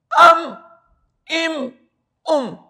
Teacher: مخرج نمبر 16 با میم واو، یعنی دونوں ہونٹوں سے با میم واو ادا ہوتے ہیں، لیکن فرق یہ ہے کہ با دونوں ہونٹوں کے تر حصے اندر والے حصے سے با ادا ہوتا ہے، اب ایبو اوبو۔ میم دونوں ہونٹوں کے خشک حصے سے ادا ہوتا ہے